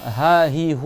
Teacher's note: le ha, il est en bas de la gorge. Il n'y a aucun frottement, il n'y a aucune contraction, ça vient du bas